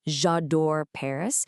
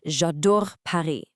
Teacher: by applying elision and dropping the e, that phrase transforms into a flowing, natural, single breath sound